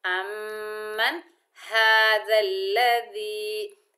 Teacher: حمزہ کو میم سے ملائیں گے اور غنہ کریں گے، میم کو نون ساکن سے ملائیں گے، نون ساکن کا اظہار ہوگا، من، امن هذا الذي۔